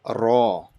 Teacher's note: that R at the end, its R is kind of like flapping.